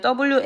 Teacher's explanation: 야에는 들어 있고 Y에는 W가 들어 있어요. 그래서 와 같은 경우 발음 기호를 쓰면 WA A와 유사하게 발음이 될 겁니다. A 앞에 붙는 W가 반모음인 것이죠.